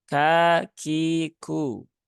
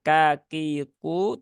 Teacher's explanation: huruf Kaf yang salah satunya dia punya sifat hams nah Nah karena itu sifat lazimah maka tunaikan sifat hams dari